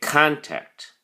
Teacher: has two syllables contact and the emphasis or stresses on the first syllable